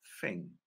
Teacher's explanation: the TH sound 'th', sometimes pronounced /f/ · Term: th-fronting